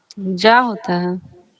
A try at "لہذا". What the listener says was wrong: جی، زا سے، جا نہیں زا۔ یہاں بھی سنگل میں بھی کوشش کریں کہ زا ہی بولیں ہم لوگ۔ ابھی ہر جگہ